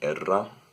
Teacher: you could have an alveolar trill